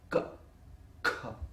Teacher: in the case of ka and kha, the vocal cord is tight. You hold it tight.